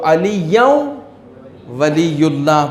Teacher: نون ساکن کے تنوین کو آپ ادغام کر دیتے ہیں واو میں، واو پر تشدید دے دیتے ہیں. نون ساکن نہیں پڑھا جائے گا، واو پڑھا جائے گا.